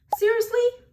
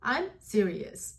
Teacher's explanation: a rising intonation, which is usually for questions. For example, seriously? You see how the tone goes up? Seriously? Goes up.